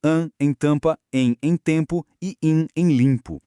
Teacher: Isso resulta nos sons integrados de an em tampa, em em tempo e im em limpo. Escrevem-se duas letras, claro, mas a pronúncia entrega apenas uma vibração nasal unificada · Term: dígrafos vocálicos